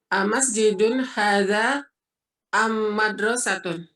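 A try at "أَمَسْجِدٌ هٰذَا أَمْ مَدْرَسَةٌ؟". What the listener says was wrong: Betul. Intonasinya dong, jawabnya mana?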